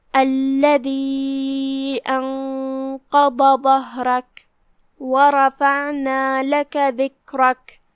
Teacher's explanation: انقض ظہرک، کلمت ظہرک میں یہاں حرف الہا ہے اور اس پہ جزم ہے، لہذا ہم ہا کو ظاہر کریں گے اور جزم سے ادا کریں گے۔ پھر حرف الراء ہے اور اس پہ زبر ہے، تو یہاں را کا حکم ہے تفخیم، تو اس کا دھیان رہے۔